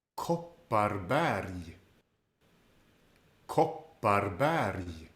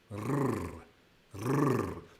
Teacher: there is 2 R sounds in this word, and they are rolled with the tip of the tongue behind the top teeth. Rrr, rrr. This is the most common R sound that we hear in Swedish.